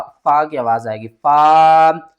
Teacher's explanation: یہ جو فا ہے نا یہ ہمارے ہونٹوں سے ادا ہوگا، جو دانت ہے نا نیچے والے ہونٹ کے تھوڑے سے اوپر آئیں گے